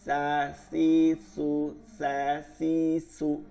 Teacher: সিন হচ্ছে জিব্বার আগা দুই দাঁতের আগা